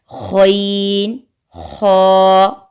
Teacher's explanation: گلے کے اوپر والے حصے یعنی جو حصہ زبان کی جڑ کے ساتھ ہوتا ہے، اس سے 2 حروف ادا ہوتے ہیں: غین اور خا، غین، خا، اور گلے کے اوپر والے حصے کو ادنا حلق کہتے ہیں۔